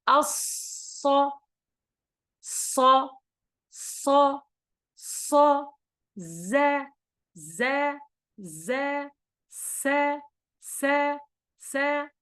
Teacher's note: وضعنا اللسان خلف الثنايا. هنا وقف اللسان خلف الثنايا السفلى من الداخل، ثم خرج الصوت من فوقه والأسنان منغلقة، فمر من بين الأسنان وأحدث هذا الصوت، إما الصاد وإما الزاي وإما السين. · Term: huruf-huruf safir